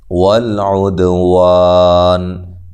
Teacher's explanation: دال پہ قلقلہ کرنا ہے، ہلا کے پڑھنا ہے، عین کو واضح نکالنا ہے، وا الف مدہ ہے تو ہاں وقف کی صورت میں آپ یہاں مد کر سکتے ہیں۔